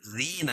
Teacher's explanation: یا ساکن سے پہلے زیر ہے تو یا مدہ اس کو ایک الف کے برابر کھینچ کے پڑھیں گے